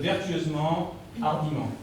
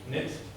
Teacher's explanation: le T à la fin d'un mot, un mot qui comporte plusieurs syllabes, eh bien ce T ne se prononce pas